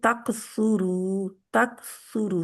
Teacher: तकसुरु तक सुरु स्वाद मोटा रहेगा ठीक है और रा मोटा रहेगा